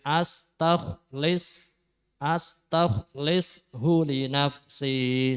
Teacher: Kho-nya ya harus mecucu nggih. Karena kho termasuk ada sifat isti'la atau tafhim dengan memoncongkan bibir.